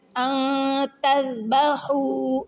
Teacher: ان تذبحوا، ذال نرم حروف میں سے ہے اور ہا جو ہے حروف حلقی جو کہ وسط حلق سے نکلتا ہے